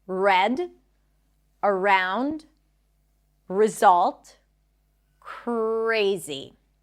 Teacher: the tongue pulls back. There is no tap. It doesn't touch the upper pallet and the lips round.